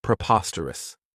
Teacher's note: This adjective has 4 syllables, and the stress is on that second syllable